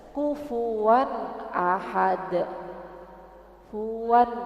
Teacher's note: Wannya itu idhar mudah ya, mudah aja. Jadi harus jelas dan tidak panjang ya.